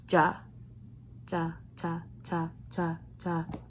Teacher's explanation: you don't really feel any air come out of your mouth